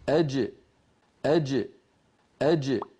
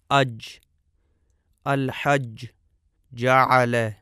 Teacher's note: جیم کا مخرج ہم اپنے سامنے دیکھ رہے ہیں۔ زبان کا درمیانی حصہ اور اوپر تالو کے درمیان سے جیم ادا ہوتی ہے، اور ملاحظہ فرمائیں کہ اس کا مخرج بالکل بند ہو جاتا ہے۔